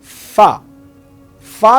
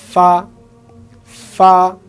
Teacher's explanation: ফা যখন আমি বলবো তখন আমার উপরের 2 দাঁত নিচের ঠোঁটের পেটে অর্থাৎ নিচের ঠোঁটের মাঝখানে লাগবে। ফা, ফা। আমরা যদি বলি ফা, ফা, ফা, অর্থাৎ ফা বলতে গিয়ে আমার সামনে মুখে দিয়ে বাতাস বের হবে।